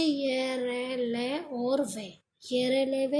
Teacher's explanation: जिन व्यंजनों का उच्चारण दोनों के मध्य से होता है, अर्थात स्वर और व्यंजन दोनों के मध्य से होता है। ना तो उसमें प्रॉपर ये जीवा किसी भाव को स्पर्श करती है और नहीं रुकावट खाती है, बस वो दोनों के मध्य से बोली जाती है उसमें। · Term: अंतस्थ व्यंजन